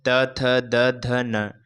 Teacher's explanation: दंत्य से त वर्ग का उच्चारण किया जाता है। जिसमें त वर्ग में त, थ, द, ध, न पांच व्यंजन आते हैं।